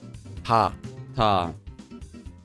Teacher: It's between T and D and is a bit soft.